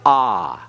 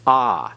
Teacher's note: it is a long a that is the a as in the English word father it's ah